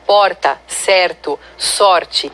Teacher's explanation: faz o r com a ponta da língua esses são dr é feito com a ponta da língua vibrante